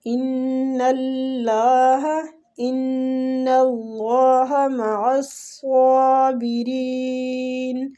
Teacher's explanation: اللہ کے لام کو ادھر پور پڑھیں گے · ان نون مشدد پہ غنہ کریں گے